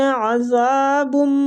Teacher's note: زال کو کھینچیں گے نرمی کے ساتھ، یہ نرمی والا حروف ہے اور آگے الف مد ہے اس لیے زال کو بھی ہم کھینچیں گے۔